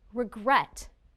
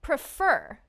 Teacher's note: the second syllable is stressed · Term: word stress